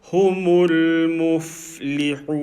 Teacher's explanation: the fa sound, continue it until you're ready to say li. Don't let go of the sound.